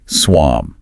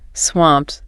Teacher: the T sound at the end of swamped is usually soft, almost unreleased in natural speech. Not a hard T.